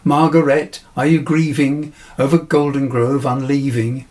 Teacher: the repeated g and r sounds create a kind of onomatopoeic gurgling effect